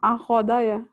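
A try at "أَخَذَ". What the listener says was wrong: Nggak ada yang panjang.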